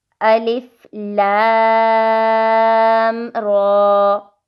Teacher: لام کے اوپر مد ہے، 5 سے 6 سیکنڈز کھینچیں گے، اور را کے اوپر کھڑی زبر ہے 2 سیکنڈز۔